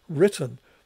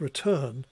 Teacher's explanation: in terms of the lexical stress so written has a stress and emphasis on the first syllable whereas return has an emphasis or stress on the second syllable